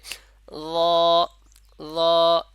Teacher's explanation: জিহ্বার আগা উপরে যে দুই দাঁত আছে দুই দাঁতের আগার সঙ্গে লাগবে লেগে উচ্চারণ হবে